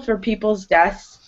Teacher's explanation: So you can hear that I'm not really pronouncing that TH so much. I pronounce the S more. And it's a way of making it easier to pronounce.